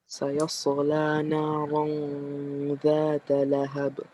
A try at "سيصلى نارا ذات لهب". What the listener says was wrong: Okay, Anil, be careful. Don't do qalqala where it doesn't belong. You say sayasla, right? So here we say sayasla naran ذات لهب.